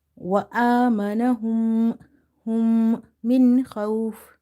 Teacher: you have nasalization or ghunnah in the meem sound